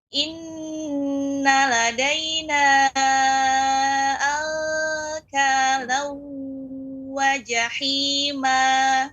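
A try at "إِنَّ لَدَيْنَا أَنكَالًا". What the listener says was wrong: Ya, ikhfa pada kaf, langsung pengucapannya eng. Angkalau, khusus kaf dan qaf. Angkalau. Tidak. Tidak naik. Ya, yang naik adalah qaf. Misalnya min qabli. Namun kalau kaf minka. Nah, tidak naik. Ya, jadi langsung dimasukkan ang. Ya, ang, langsung hidung. Angkalau. Ya, ang. Jadi bukan samar lagi.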